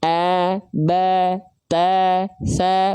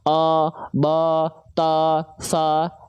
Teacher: ketika dia berharokat fathah keluar dengan vokal A, tipiskan. A, ba, ta, sa, bukan o, bo, to, so.